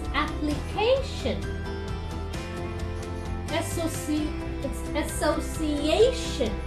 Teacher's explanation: this CA has the sound of K, and hence it is told with more aspiration